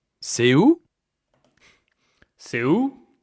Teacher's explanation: This is a question because the tone goes up.